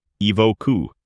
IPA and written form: ɪˈvəʊ.kə (Evoker)